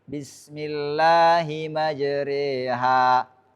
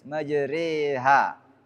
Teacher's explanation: ah baik sudah ya kemudian yang berikutnya adalah imalah ah itu membaca fathah yang miring ke kasrah atau Alif miring ke ya